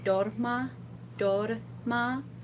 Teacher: if you have one R between two vowels, you can make a D sound, and it'll sound pretty convincingly like a flipped R. So like here, you could think of saying dorma, dorma.